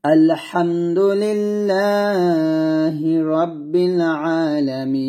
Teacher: থামার কারণে এই নুনটাকে আমি সাকিন করে ফেলছি